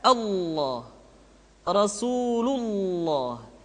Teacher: Maka lam yang terdapat pada lafz jalalah tersebut mesti ditebalkan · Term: lafaz Allah, tafkhim